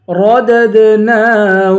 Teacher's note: رددناہ، را کو پر پڑھیں گے، پہلی والی دال سے دوسری والی دال کو ملائیں گے اور دوسری والی دال پر قلقلہ کریں گے، آواز کو ہلائیں گے